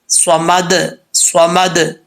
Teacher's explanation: دال حروف قلقلہ میں سے ہے، جب ساکن ہوگی تو دال میں قلقلہ آئے گا